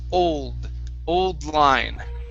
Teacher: make sure that you're pronouncing that d if not it sounds like on line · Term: d sound, D sound